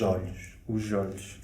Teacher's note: Nós faríamos a junção com o som de J, então seria os olhos.